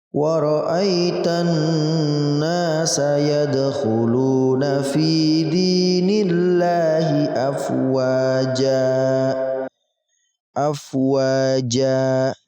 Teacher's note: Afwaja, kita panjangkan jimnya 2 ketukan. Sama seperti mad tabi'i.